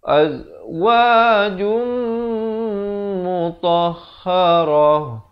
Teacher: Azwajum, di sini idgham bi gunnah, masuk beserta dengung 2 harakat. Azwajum mutahharah, itu kalau waqaf.